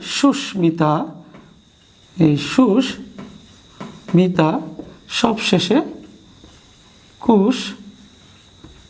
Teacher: সবগুলো ময়ের কিন্তু স্বাভাবিক আচরণ হয়েছে, অর্থাৎ দ্বিত্ব উচ্চারণ হয়নি, স্বাভাবিক উচ্চারণ হয়েছে